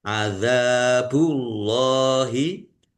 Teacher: Adzabullahi dzal fathah alif mad thobi'i panjang dua harakat. Allahnya dibaca tebal karena harakat di depannya domah.